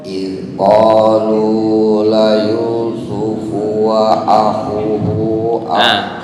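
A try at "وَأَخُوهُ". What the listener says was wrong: Khu panjang. Wa akhuhu. Nah, di sini semua huruf mat nggak dikasih harokat sukun.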